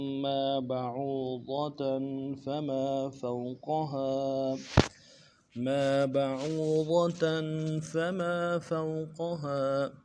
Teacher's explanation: بعوضة میں با کے بعد عو ہے، عین واو پیش عو، واو مدہ ایک الف دار میں کھینچیں گے، ضاد کو موٹا ادا کریں گے، تنوین میں غنہ کریں گے.